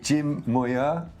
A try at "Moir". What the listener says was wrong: Oh, you could say it. That was a kind of French pronunciation. It's a Scottish name and it's pronounced Moir.